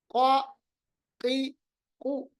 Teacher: इस जुबान को आखिर वाला जो हिस्सा है इसको डायरेक्टली ऊपर के साथ मिलाना है तो हमारे पास कॉफ अदा हो रहा है।